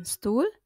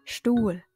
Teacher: Vokal U di sini dibaca panjang dan huruf H tidak dilafalkan.